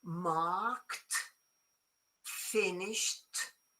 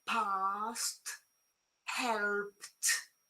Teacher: You say the consonant of k. Your throat doesn't vibrate.